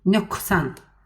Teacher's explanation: Nöqsanda q yazırıq k deyirik.